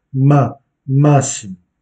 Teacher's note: Et vous accentuez la première syllabe